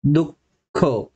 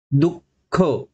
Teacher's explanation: स्वरादी असे म्हणतात उदाहरणार्थ विसर्ग म्हणजे काय श्वास सोडणे दुःख जेव्हा दुःख हा शब्द आपण उच्चारण करत असतो तर दुनंतर आपण पूर्णतः श्वास सोडून टाकतो